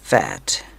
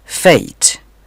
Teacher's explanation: मिसाल के तौर पर फैट इसमें ए की आवाज ए जैसी है जबकि फेट में ए की आवाज एई है